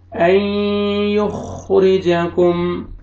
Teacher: नून साकिन के बाद हरूफ यरमलून में से या है, आपने इदगाम करना है गुन्ना के साथ